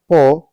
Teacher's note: आपका प अगर हम प को देखते हैं तो ओट है अल्प प्राण है लेकिन अघोष है